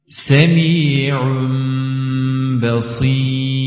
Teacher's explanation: tenvin ve nunun sesi Mime çevrilir o şekilde okunur tenvin ve sakin nunun nun sesi yok olur Bundan dolayı gunne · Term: İklap